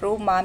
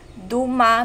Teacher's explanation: Gaddang also differentiates between R and D, which are merged in some other Philippine languages.